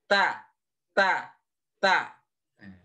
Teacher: Jadi lidah kita ini kita tempelkan di belakang gigi seri yang atas. Ta. Tidak perlu berdesis yang terlalu seperti ja, tidak.